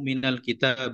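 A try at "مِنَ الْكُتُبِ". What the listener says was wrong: Minal kutubi ya kalau kita pakai alif ini nggak ada alif.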